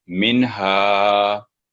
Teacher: नून को ना यहाँ बिल्कुल स्टे नहीं करना, कोई देर नहीं लगानी, सिर्फ एक टच देना है नून पर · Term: इजहार